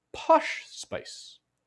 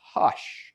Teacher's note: is you're really delaying you're really exaggerating that delay between when the lips part and the vocal cords start vibrating posh spice there you go posh and that's what this is